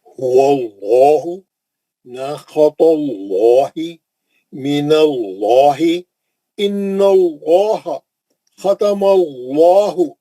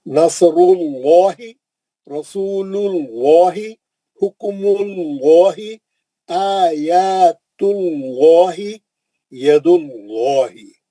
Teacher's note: آواز کو موٹا کر کے منہ بھر کر تفخیم سے پڑھیں گے